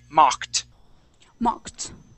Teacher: Now, I believe you pronounced your ED correctly, but that O, that O in the word is going to sound like an ah sound, okay? So, we're going to say mocked.